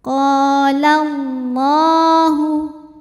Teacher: lam jalalah dibunyikan secara tafkhim, sebab harokat huruf sebelumnya fathah. Maka lam dibunyikan dengan cara menebalkannya.